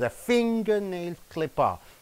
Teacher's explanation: Three nouns are there. First noun is stress. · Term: Three word set phrases